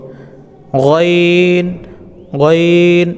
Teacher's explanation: কন্ঠনালীর উপরিভাগ হতে নির্গত হয়